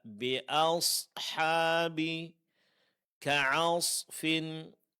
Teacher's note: yang ditebalkan adalah huruf sad. Sedangkan huruf sebelumnya dan huruf setelahnya itu mesti ditipiskan dan jangan sampai terpengaruh oleh ketebalan huruf sad.